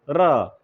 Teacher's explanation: र के उच्चारण में जो ध्वनि है ऐसा लगता है वाइब्रेशन होता हो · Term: कंपित व्यंजन